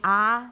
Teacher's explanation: with the tongue as low and as far back as possible · a neutral position watch out that's more important than it looks your lips are not particularly spread nor are they particularly rounded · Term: cardinal vowel five, cardinal vowel number five